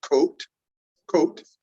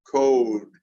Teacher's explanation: vowels lengthen before voiced consonants.